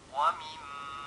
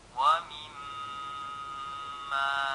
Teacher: Mim bertasydid hukumnya gunnah, yaitu menahan bunyi huruf mim bertasydid seukuran 2 harokat